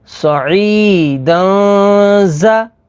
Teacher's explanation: تنوین کے بعد زا ہے، زا حروف اخفا میں سے ہے تو یہاں پر اخفا ہوگا یعنی غنہ کر کے پڑھیں گے